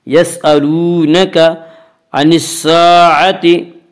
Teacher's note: الف میں شا مدہ ہوتا ہے، الف سے پہلے زبر ہوتا ہے، الف مدہ کو ایک الف کے برابر کھینچ کر پڑھیں گے